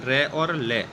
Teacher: रे और ले वर्ण, ये जो बोले जाते हैं इनका उच्चारण स्थान एक अलग होता है जो होता है वर्तस्य। ये दोनों वर्ण बोले जाते हैं वर्तस्य की सहायता से।